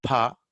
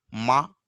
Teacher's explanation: Whereas pa, just you keep your hands in front of your mouth. When you say pa, after pa, air escapes. You can feel the force of the air. But when you say ma, there is no force. There is no air.